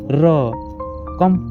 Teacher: जब आप र बोलते हैं तो जीभ तेजी से कंपन खा रही होती है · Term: प्रकंपित